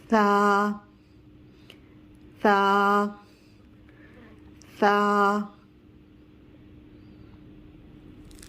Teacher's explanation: سا زبان کی نوک اوپر والے دانتوں کے سامنے والے دو دانتوں کے کناروں سے ٹچ کریں گے زبان کو تو سا کی ادائیگی ہوگی